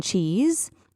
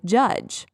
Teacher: it's the exact same position they do the same thing but ch is unvoiced and j is voiced